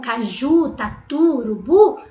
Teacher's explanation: Essa palavra é oxítona, porque a sílaba tônica é a última, terminada em U.